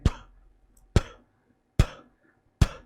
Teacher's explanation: हमारे vocal cords जो हैं उनमें कोई वाइब्रेशन नहीं होते हैं ये बोलने पर। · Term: वॉइसलेस साउंड्स